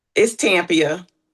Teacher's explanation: So the accent is on the first syllable.